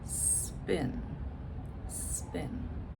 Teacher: Okay, so it's smooth. I just go from S to P directly, no vowel in between, no vowel at the beginning. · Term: consonant cluster